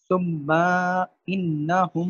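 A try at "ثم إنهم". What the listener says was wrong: یہ پھر لمبا ہو گیا, میم کو لمبا نہیں کریں.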